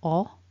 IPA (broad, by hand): ɒ